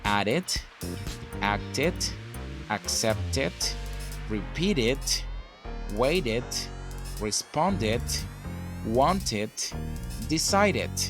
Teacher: what we do is pronouncing this Ed like an additional syllable